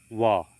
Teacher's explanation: ध्वनि का उच्चारण करते समय ऊपर के दांत और नीचे के ओठ आपस में मिलते हैं। इसलिए व को दंतोष्ठ कहा जाता है। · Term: दंतोष्ठ्य